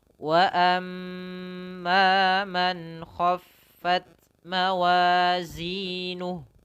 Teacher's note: Mim tasydid itu gunnah. Ditahan ya.